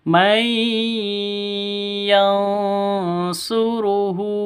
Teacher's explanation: Mai, dengungnya dua ketukan atau dua harokat